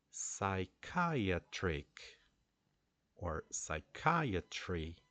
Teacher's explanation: eagerness right uh what about psychiatric it's a different pattern because we have a a light syllable a weak syllable followed by a strong syllable which is Kai and then it follows two weak syllables